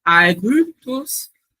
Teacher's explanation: ele vai ser um I que ele é pronunciado com os lábios arredondados